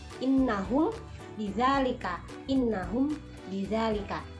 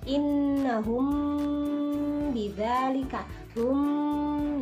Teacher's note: Jadi, cara membacanya ikhfa syafawi ini adalah dengan cara mendengung. Huruf mim itu tersebut langsung masuk kepada huruf selanjutnya, yaitu huruf ba.